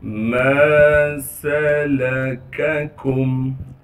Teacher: मीम के बाद अलिफ मद्दा होने की वजह से मीम को 1 अलिफ के मिकदार खींचेंगे। अगर ये अलिफ मद्दा ना होता तो फिर हम मीम को बिल्कुल नहीं खींचते। · सीन की आवाज़ को यानी सीटी को साफ करके अदा करेंगे।